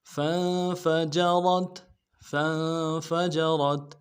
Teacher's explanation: فا کو نون کے سامنے لانا ہے، نون ساکن ہے غنہ کریں گے، فا کو نرم سے ادا کریں گے، جیم کو نرم سے ادا کریں گے، را کو تا کے سامنے لانا ہے، را کو موٹا کریں گے.